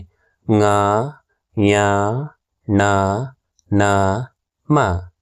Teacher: ವ್ಯಂಜನಾಕ್ಷರಗಳಿಗೆ ಅನುನಾಸಿಕ ಎನ್ನುವರು ಈ ಅಕ್ಷರಗಳನ್ನು ಉಚ್ಚರಿಸಬೇಕಾದರೆ ಮೂಗಿನ ಸಹಾಯ ಬೇಕೇಬೇಕು ಹಾಗಾಗಿ ಇವುಗಳನ್ನ ಅನುನಾಸಿಕ ಅಕ್ಷರಗಳು ಅಂತ ಕರೀತಾರೆ